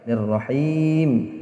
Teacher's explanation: himnya ini juga panjang 6 harokat, ya, karena dia berhenti, ya, namanya mad arid disukun.